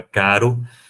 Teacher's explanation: Mas, fonologicamente, há um contraste clássico entre o R fraco, que é, por exemplo, a palavra caro, que é realizado como TEP